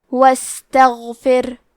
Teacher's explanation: آخری میں حرف را پہ جزم ہے، یہاں را کا حکم ہے ترقیق، کیونکہ اس پہ جزم ہے، لیکن اس کے پہلے والے حرف کے نیچے فا کے نیچے زیر ہے، تو ہمیں حرف را کو پتلی آواز میں پڑھنا ہے